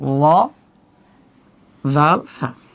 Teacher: জাল এবং সা বলার সময় জিহ্বাটা ফাঁকা, জিহ্বার গোড়াটা নিম্নমুখী থাকবে কারণ এটা পাতলা হরফ।